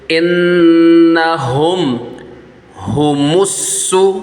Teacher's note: میم ساکن کے بعد آگے جو ہے یہ ہا آ رہا ہے، با اور میم کے علاوہ ورڈ آ رہا ہے، یہاں پر اظہار شفوی کا قاعدہ ہوگا، اس میں غنہ نہیں کریں گے۔ انہم ہمس، میم کو سین کے ساتھ ملائیں گے، الف نہیں پڑھا جائے گا، لام بھی نہیں پڑھا جائے گا۔